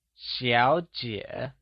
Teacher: Xiǎo and jiě are both pronounced using the falling rising tone, where x carries the sh sound in Xiǎo